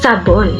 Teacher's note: Sa panggilagid ang ibabaw ng dulong dila ay lumalapit o dumidiit sa punong gilagid.